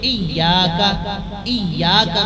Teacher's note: یہ یا جب آپ ادا کریں گے تو زبان کا درمیان کا حصہ یعنی سینٹر آف ٹنگ جو ہے وہ اوپر تالو سے ٹچ کر جاتا ہے